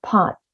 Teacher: Pot [t] sound, it is unreleased